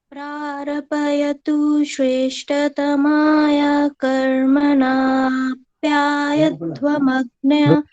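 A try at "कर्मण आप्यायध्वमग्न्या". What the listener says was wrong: यहाँ पर कर्मण में आ, ये मिलाना नहीं है।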